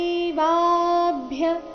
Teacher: ವ ದೀರ್ಘ ಬಂದು ಅದರ ಮೇಲೆ ಆಘಾತ ಬರಬೇಕು